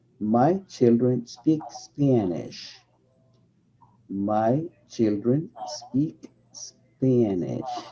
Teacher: For example, when you have, my children speak Spanish, it is very common to listen to other speakers say, my children speak Spanish. But you need to connect those S's as if they were the last sound of the former word.